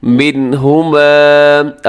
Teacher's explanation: اس آیت مبارکہ میں دیکھیے گا سب سے پہلے فَيَتَعَلَّمُونَ، اس میں عین کا خیال رکھیے گا، مِنْهُمَا، اب یہاں نون ساکن ہے اور نون ساکن کے بعد ہا آ رہا ہے، تو ہا حروف حلقی میں شامل ہے۔ اب یہاں پہ اظہار کیجیے گا، غنہ نہ کیجیے گا۔ مِنْهُمَا لمبا اسی ضرور کیجیے گا کیونکہ اس کے آخر میں الف ہے، تو الف کی وجہ سے لفظ کو حرف کو لمبا کیا جاتا ہے۔